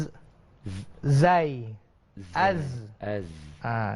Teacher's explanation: Tapi huruf zai lidah kita di dalam, bukannya di luar. Dan dia ada desiran dinamakan sebagai safir. Desiran, satu desiran.